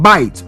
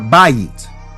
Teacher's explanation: So some of the native speakers would say bite. They'll put it as one syllable instead of bayit or bayit. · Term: diphthong